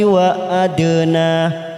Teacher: dal sukun kita pantulkan, biasanya ada warna biru tua, qalqalah sugro.